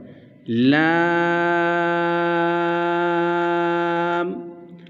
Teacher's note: آگے ہے لام، اس کو ہم لمبا کر کے کھینچ کر پڑھیں گے، مد کریں گے 5 حرکات کے برابر۔ لام، یہ حروف طرفیہ ہے، زبان کا کنارہ اور انیاب سے ثنایا تک کے دانتوں کی جڑ سے یہ ادا ہوگا۔